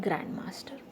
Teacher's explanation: in the grand master the stress is on grand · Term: compound words